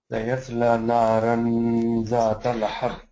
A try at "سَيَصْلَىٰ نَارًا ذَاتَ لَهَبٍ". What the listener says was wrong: No, you don't pronounce the gunna like that. You don't pronounce the nuns, the tanween like that. Because if you're saying naran, that means you're not pronouncing the ikhfa. So you have to say naran.